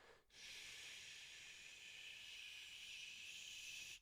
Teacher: the sh sound is continuous, which means you can hold it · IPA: /ʃ/